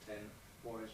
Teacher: The N, voiced alveolar nasal, changes its place, alveolar, to the place of the following consonant voice. Voiced bilabial plosive, it changes to bilabial.